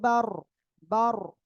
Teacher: র সাকিন তার ডানে জবর, মোটা আওয়াজে পড়বো